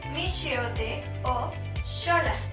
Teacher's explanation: La segunda forma de pronunciación de la X en el español de México puede ser como SH, es decir, sh.